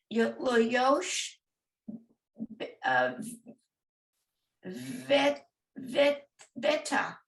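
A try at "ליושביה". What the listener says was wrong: So veha. This is a hey. Veha. Yoshveha.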